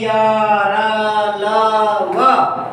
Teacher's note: जब हम उच्चारण करते हैं य र ल व तो कहीं स्पर्श नहीं होता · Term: अंतस्थ व्यंजन